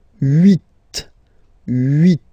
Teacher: Okay, then here final T is pronounced, so huit, huit. Remember in French this H letter here, okay, doesn't exist phonetically, so we don't really pronounce it